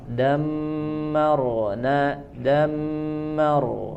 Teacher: ra sukun sebelumnya fathah termasuk yang dibaca tebal, ya, angkat suaranya ke atas